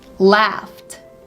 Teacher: Laugh sounds more like there is a t in the end, right?